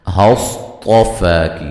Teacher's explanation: صاد اور طا دونوں کو موٹا ادا کرنا ہے. فا مد اصلی ہے.